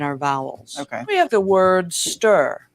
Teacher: we have the word stir that's a vowel that has what is called our coloring so that makes it rhotic